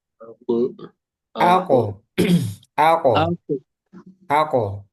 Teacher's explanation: langit-langit paling pangkal, paling belakang itu huruf yang keluar huruf kof.